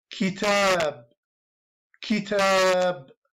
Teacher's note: it has a short vowel, e, kasra, ki, and the long vowel, a, kitab, kitab.